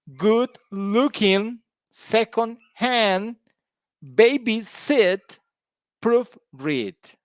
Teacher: you see the stress is on the second part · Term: stress on the second part